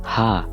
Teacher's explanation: Ha, a voiceless pharyngeal fricative. This is a deep, breathy sound come from the center of the throat with no dots.